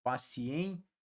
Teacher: o i ele tem um prolongamento um pouquinho menor que o a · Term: ditongo